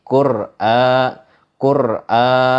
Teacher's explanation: Ro-nya itu dibaca sukun atau mati, dibaca tebal.